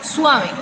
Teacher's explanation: lo que hago es como separarla, porque es un diptongo.